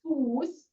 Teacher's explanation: if my vowel in front of it is a long vowel, so foot is Fuß, so my U is long. So then I do the Fu with a sharpest S.